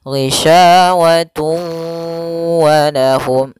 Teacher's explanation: tanwinnya dimasukkan ke huruf waw kemudian ditahan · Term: idgham bi gunah